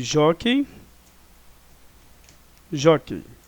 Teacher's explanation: Nós temos aqui a sílaba tônica, o Jó, né?